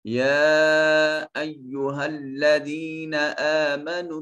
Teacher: یا کے اوپر الف المدیہ الصغیرہ ہے اور اس کے اوپر ایک مد بنی ہوئی ہے، یہ چھوٹی مد ہے، اس کو 2 سے 3 الف کے برابر لمبا کرتے ہیں